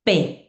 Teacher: P es una consonante bilabial